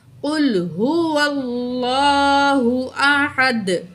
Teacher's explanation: تو یہاں 2 پیش ہیں، دونوں پیش ڈراپ ہو جائیں گی، جہاں دال ساکن پڑھا جائے گا۔ اور حروف جب دال جب ساکن ہو جائے تو ادھر ہم کلکلا کر کے پڑھتے ہیں، یعنی کہ آواز ڈبل آتی ہے۔